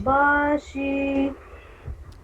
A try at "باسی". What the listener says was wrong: باشی نہیں، باسی. باشی نہیں، باسیتونا. شی نہیں، سی.